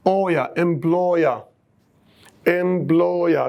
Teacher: And the second one is oya, oya, oya. If you know the word employ, employ, this is oi. Oi, a diphthong. When we add er, it becomes oya